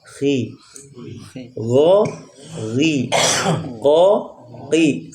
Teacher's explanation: mendapatkan pangkal lidah kita naik ke langit-langit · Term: tebal